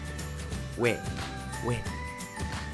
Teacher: Contemporary Koreans do not distinguish among ㅚ, ㅙ, ㅞ sound-wise at all. They pronounce exactly same.